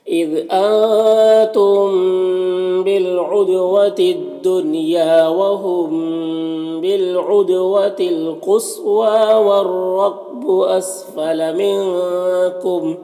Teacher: اسفل منکم نون میں اخفا ہوگا، کم کے میم میں اظہار شفوی ہو رہا